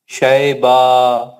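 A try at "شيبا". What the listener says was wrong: شیبہ شیبہ نہیں ہے میرے بھائی، زیر ہے، شین کے نیچے زیر ہے. نہیں نہیں، جب بدیسری نہیں کرنا، ملا کے پڑھے تو شیبہ نسماء.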